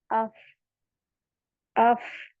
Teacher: इसमें हमस की सिपात है तो इसमें एयर फ्लो पास होगा